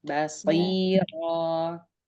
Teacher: Ba-nya tipis, jangan basri